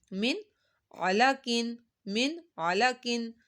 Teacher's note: یہاں پہ کوئی لفظ لمبا نہیں کرے، غنہ بھی نہیں ہو رہا کیونکہ یہاں پہ نون ساکن کے بعد یہ عین حروف ہلکی ہے، حلق کے درمیان سے ادا ہوتا ہے، یہاں پر ہم نے غنہ نہیں کرنا۔